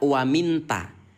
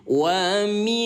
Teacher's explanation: cara membaca ikhfa yaitu dengan cara disamarkan selama 2 ketukan